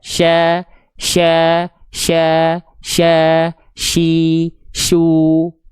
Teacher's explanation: tengah lidah untuk huruf syin itu diarahkan ke langit-langit di atasnya. Tapi enggak boleh nempel. Diarahkan, bukan ditempelkan.